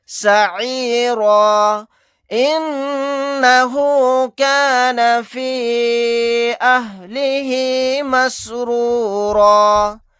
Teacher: نون کے اوپر تشدید ہے, یہاں پر غنہ کر کے پڑھیں گے. یہاں پر مد منفصل کا قاعدہ ہوگا.